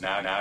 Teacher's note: that mouth vowel for both accents it starts from a kind of higher place and goes wow you can hear that in the word now